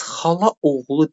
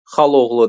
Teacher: Bu zaman qoşa saitin biri düşür.